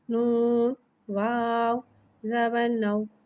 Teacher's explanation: واولین کو بغیر کھینچے بغیر جھٹکے دیے نرمی سے معروف پڑھیں گے، اور زبر کو منہ کھول کے ادا کر کے پڑھیں گے۔